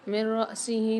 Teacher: نون ساکن کے بعد ادغام بلا غنہ کے 2 حرفوں میں سے را مشدد آ رہی ہیں، غنہ نہیں کریں گے، ادغام کر کے پڑھیں گے